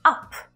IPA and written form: ʌp (UP)